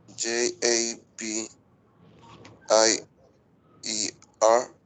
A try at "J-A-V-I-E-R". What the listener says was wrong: Que más pronunciada, exagera, un poquito exagerada esa V. Ojo que en inglés tenemos que exagerar los sonidos para sonar nativos, ¿cierto?